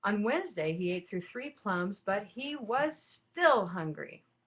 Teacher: ate through three plums but he was still hungry notice that I'm drawing out the delivery there it's slower with an even higher note on the word still